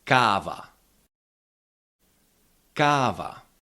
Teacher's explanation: The long variant á is the same sound. It's just held about twice longer.